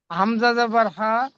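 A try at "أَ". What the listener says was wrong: হামজা জবর্যা হা নয় হামজা জবর আ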